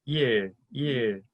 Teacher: The tip of your tongue will go to the roof of your mouth for that RL sound. And so it will sound like 일, 일.